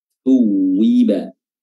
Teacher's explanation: Thuwiba huruf ta sama dengan zal, yaitu diapit kedua gigi atas dan bawah.